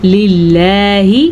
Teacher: یہ اللہ کا نام باریک ہے کیونکہ اللہ کے نام سے پہلے زیر ہے